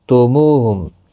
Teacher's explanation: وجدتموہم، دال ساکن نہیں پڑھا جائے گا کیونکہ آگے مشدد حرف ہے، تو وجدتم وجدتموہم سختی کے ساتھ پڑھیں تاکہ تشدید ظاہر ہو. مو واو مدہ ہے، ایک الف کی مقدار کے برابر کھینچ کر پڑھیں. یہاں پر بھی آپ وقف کر سکتے ہیں، میم ساکن ہی رہے گا اور ملانے کی صورت میں اظہار شفوی ہوگا، گنہ نہیں ہوگا.